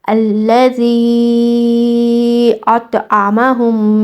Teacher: زال کو آپ نے 4 سے 5 حرکہ کھینچ کے ادا کرنا ہے۔ اس کے بعد یہ جو طا ہے اس کو موٹی آواز کے ساتھ پڑھا جاتا ہے، اس کو آپ نے موٹی آواز کے ساتھ ادا کرنا ہے۔ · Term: مد جائز منفصل